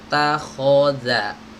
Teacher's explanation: Takhodha, ta tipis, kho tebal, za tipis. Takhodha, bukan takhodha tebal semua atau tipis semua.